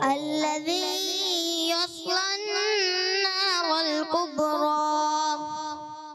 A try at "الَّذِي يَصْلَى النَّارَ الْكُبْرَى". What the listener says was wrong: ایک تو صاد کو آپ نے موٹا رکھنا ہے, ٹھیک ہے؟ الَّذِي يَصْلَى النَّارَ الْكُبْرَى.